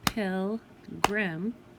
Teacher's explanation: you hear the break after the L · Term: break in the syllable